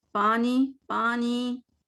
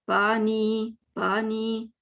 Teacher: میں نے ناک سے پڑھا ہے پانی, اس لیے کہ میں نے منہ صحیح نہیں کھولا, تو وہ آواز نے کہیں تو جانا ہے. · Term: غنہ